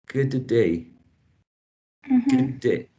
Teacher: So we don't release the first plosive. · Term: gemination